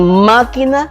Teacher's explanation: En máquina, la sílaba más fuerte que suena, o sea, la sílaba tónica es ma.